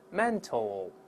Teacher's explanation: 这个▁mental▁也是注意不要读馒头啊，后面还有一个▁l▁的声音